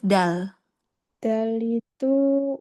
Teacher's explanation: ujung lidah bertemu dengan tempat tumbuh gigi seri atas